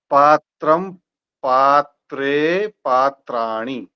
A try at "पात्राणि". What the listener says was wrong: एणी हरस्व है, दीर्घ है? पात्राणि उसको खींच के दीर्घ तो नहीं करना है ना, पात्राणि। पात्राणि, झटके नहीं देना है, पात्राणि।